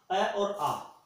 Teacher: अ और आ दोनों स्वर जो है वो भी कंठ से ही बोले जाते हैं